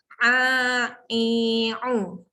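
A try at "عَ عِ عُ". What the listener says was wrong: huruf ain bukan datang dekat hidung. Jangan sengah tak.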